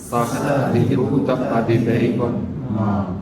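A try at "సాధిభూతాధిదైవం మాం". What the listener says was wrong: ఇప్పుడు అటు విడదీసినప్పుడు ఏమవుతుంది? అక్షరం పెరుగుతుంది, వ్యాకరణం తప్పు. సాధి చెప్పడానికి సా గురువు, ధీ వచ్చింది. ఈ ధీ వల్ల కూడా అది గురువు అవుతుంది. సరిపోయి అప్పుడు ఏమంటే ఒక గురువు తర్వాత ధీకి హ్రస్వం వచ్చింది, గురువు లఘు వచ్చింది. ఇప్పుడు స అధి అనేప్పుడు ఏమవుతుందంటే స ఒక లఘు, ఆ ఇంకొక లఘు, ధీ ఇంకో ధీ వల్ల ఆ గురువు అవుతుంది. మళ్ళీ అయి లఘు గురువు లఘు రెండు అవుతుంది. అట్లా ఒక అక్షరం పెరుగుతుంది, ఒక లఘు పెరిగింది, ఛందస్సు పోయింది.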